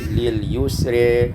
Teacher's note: imalatu fathatir ra wal alif, dibaca imalah fathah ra dan alif menjadi lil yusri